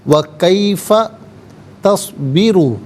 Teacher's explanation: تصبرو میں را پر پیش ہے، را کو پر کر کے پڑھا جائے گا